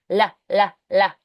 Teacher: Now the L is a lateral sound. So the tongue tip touches the ridge, but the air escapes L. · along the sides of the tongue. So we let the air escape along the sides.